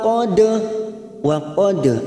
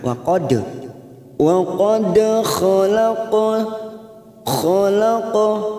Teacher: Wa qad ada huruf dal sukun namanya qalqalah sugra, karena mati asli di tengah kalimat jangan lupa dipantulkan.